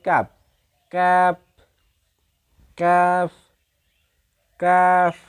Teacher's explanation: জিহ্বার গোড়া সামান্য সামনে বাড়িয়ে তার উপরস্থ তালুর সঙ্গে লাগিয়ে উচ্চারিত হয়। জিহ্বার গোড়ার সামান্য সামনে বাড়িয়ে উপরস্থ তালুর সঙ্গে লাগিয়ে দিয়ে উচ্চারিত হয় কাপ কাপ কাফ কাফ।